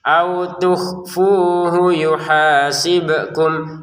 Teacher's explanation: Fu panjang, hunya pendek karena kan nggak ada waw.